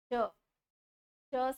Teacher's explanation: च से जब हम बोलते हैं तो जीवा सीधा नीचे तालु से टच होती है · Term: तालव्य वर्ग